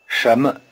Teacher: 什么 The initial consonant in 什么 is the same as the initial consonant in shay. The tip of the tongue is curled back in the retroflex position. In normal speech, the tone pattern of 什么 sounds rather like a rising tone over both syllables.